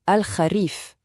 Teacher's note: Alors la petite astuce pour la prononciation, ce son « ra », c'est un son qui n'existe pas vraiment en français. Il faut le faire venir du fond de la gorge, un peu comme un léger raclement.